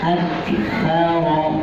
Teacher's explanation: Aksaro bisa tidak dihamaskan. Harusnya ada hamas di situ, menghembus nafas pada saat mengucapkan ka.